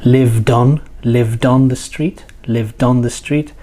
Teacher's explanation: that's the most common form of connected speech, joining the final consonant to the next vowel sound.